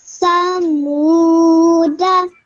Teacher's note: when you are reading it in continuity, the alif is dropped. So you are just left with a simple dal with a fatha.